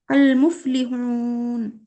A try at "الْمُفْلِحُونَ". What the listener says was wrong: হা উচ্চারণ হয়নি। আল মুফলিহুন।